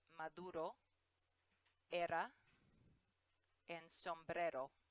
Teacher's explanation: It's pronounced a single R sound if it's in the middle or the end of the word. And in Spanish, that sounds like an English D. It's the D sound that you hear in ladder or little.